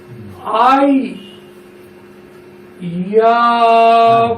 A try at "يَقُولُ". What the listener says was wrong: রুটটা একটু লম্বা করতে হবে, তিন আলিফ মাদ।